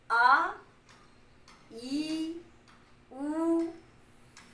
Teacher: दीर्घ स्वर को द्विमात्रिक स्वर भी कहते हैं, 2 मात्राओं वाला। अर्थात ह्रस्व स्वर का दुगुना समय लगता है।